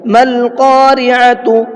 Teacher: یہاں بھی الف کو چھوڑ دیا، صرف لام کو پڑھا ہے